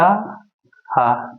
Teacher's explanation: तीनों सा और जो हा होता है यह महाप्राण होता है सा को बोलने में हा को बोलने में अधिक हमारे मुख से वायु निकलती है